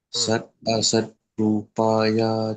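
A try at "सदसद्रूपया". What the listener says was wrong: in the word on this sadasat, not sat asat. Sadasat. Sada. So you combine in such a way that it's not sadasat. So sadasat, sadasat, sat asat. So when you combine, sounds like sadasat.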